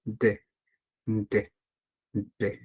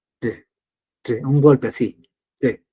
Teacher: vamos a golpear la lengua en la parte superior de los dientes donde inicia el paladar alto, ¿sí? Y ahí vamos a hacer D.